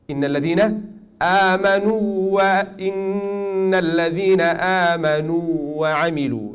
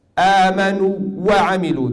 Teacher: you need to give the two haraka mad of the first waw and then show the next waw